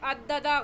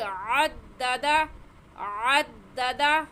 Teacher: عین حلق کے درمیان سے نکلتا ہے تو اسے نکال کر پڑھیں گے